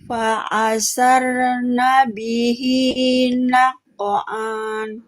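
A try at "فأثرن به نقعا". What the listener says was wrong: Fa'a, bukan fa'a. Jangan masukkan ke tengah tenggorokan hamzah, tenggorokan bawah. Fa'athar. Fa'athar.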